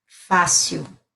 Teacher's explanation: o L está no final, então eu pronuncio com o som de U.